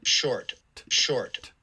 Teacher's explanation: pretty clearly released you can hear that at the tail end